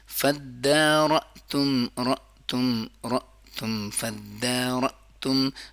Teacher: جب حمزہ ساکنہ ہوتا ہے تو اس میں جھٹکا ہوتا ہے